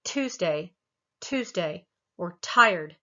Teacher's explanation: When we start a word with T, or the sound T, it has this little bit of an aspiration after it. And if you put your hand in front of your mouth when you say something like bet, and feel the difference between when you say that and when you go Tuesday, or tired, you'll feel that aspiration. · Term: aspirated T